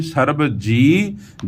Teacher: ਜੀਅ ਨੂੰ ਥੋੜਾ ਜਿਹਾ ਖਿੱਚ ਕੇ ਬੋਲਣਾ ਹੈ